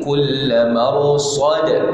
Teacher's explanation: Sad ada qalqalah di situ. Tak, tak boleh baca marsad.